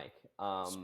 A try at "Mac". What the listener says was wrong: Mac, got it. You're mispronouncing the middle letter there. Yeah, like you're saying I instead of A. It's a weird lisp that you have.